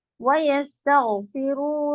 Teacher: اذ جا نہیں جا غلط ہے جا صحیح جاءهم الهدى ويستغفروا غین کی آواز چلے گی کٹ نہیں ہوگی جھٹکا بھی نہیں تاغ نہیں کنٹینیو چلتی ہے وَيَسْتَغْفِرُوا رَبَّهُمْ إِلَّا تَأْتِيَهُمْ میں آواز